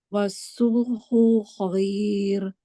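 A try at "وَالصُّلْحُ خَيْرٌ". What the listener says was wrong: Nah, jangan wasulhu khair. Kayak ada mat di hu-nya. Jadi cepat-cepat. Wasulhu khair.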